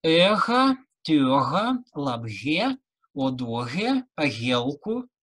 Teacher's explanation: Это «г», звонкая пара «х», «х» и «г».